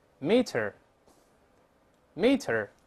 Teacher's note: 都是▁meter，meter▁后面没有卷舌音